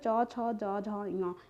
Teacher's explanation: तालव्य वर्ण हो जाता च, छ, ज, झ, ञ, मतलब चा वर्ग के जो पूरे 5 वर्ण होते हैं वो हमारे तालव्य हो जाते हैं उच्चारण स्थान के आधार पर